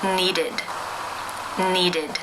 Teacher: the verb in the infinitive form is the D sound therefore it is case three where the e d is pronounced as the e as in sit with the D sound